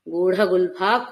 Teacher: గూడ మహాప్రాణ డకారం పెట్టాలన్నమాట